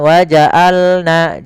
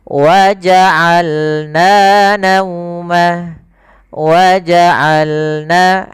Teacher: Kemudian وَجَعَلْنَا نَوْمَكُمْ سُبَاتًا وَجَعَلْنَا Ain, hati-hati dalam pelafalan ain, jangan waja'alna, jangan hamzah, atau jangan waja'alna masuk ke rongga hidung, tapi dia Bagaimana? Dari tengah tenggorokan kita lafalkan ain.